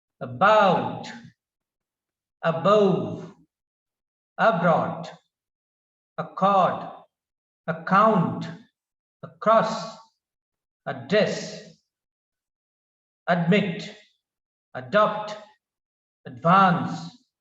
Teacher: the word stress is on the second syllable the accent is on the second syllable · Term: word accent